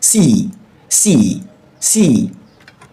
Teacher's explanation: C is a pure vowel sound. Your lip remains in the same position.